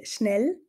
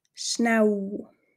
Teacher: in anderen Kantonen wie zum Beispiel Bern haben wir eine Vokal Dominanz das heißt ein Doppel l wird da schnell mal zu einem U